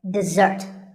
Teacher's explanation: this is dessert notice that the first syllable is diff and the second starts with a z sound we stress the second syllable